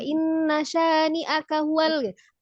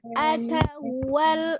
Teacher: Jadi langsung K-nya tidak dipanjangkan tetapi tetap harus sempurna ya Kak ya, tidak cepat-cepat juga inna syani'aka huwal tapi aka huwal ya. Tetap K-nya tetap sempurna walaupun dia pendek, hanya tidak diayun.